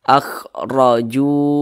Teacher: Nah, huruf ra yang memiliki tanda baca fathah, maka huruf ra dibaca tebal, dibaca tafkhim, sehingga pangkal lidah kita itu naik ke atas.